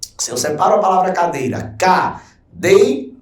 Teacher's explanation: Se eu separo a palavra cadeira, cadeira, Perceba, esse D aqui tem um ditongo. É um ditongo decrescente. Vai da vogal, que é o E, para o I.